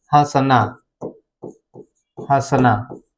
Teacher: इसका उच्चारण जब भी होता है तो हवा नाक और मुंह दोनों से बाहर निकलती है। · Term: चंद्र बिंदु